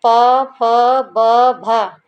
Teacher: भ जो है स्पर्श है घोष भी है महाप्राण भी है ओष भी है